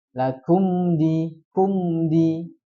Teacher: Lakum di mim sukun ketemu dal. Izhar syafawi. Jadi jelas.